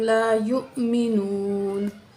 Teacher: तो यहाँ वाव पे हमज़ा है, हमज़ा जब साकिन हो तो झटके के साथ पढ़ेंगे